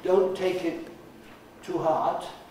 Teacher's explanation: if you say uh don't take it too hard and use the strong form of the word to right then you don't sound like an englishman at all